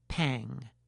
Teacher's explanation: If the tongue tip rises, the result will be “pan”, and if the tongue back is active, then it will be “pang”